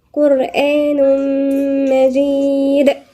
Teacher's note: الهمزة هنا مرققة بعدين تنوين بالضم وبعديها الميم يبقى هنا في غنة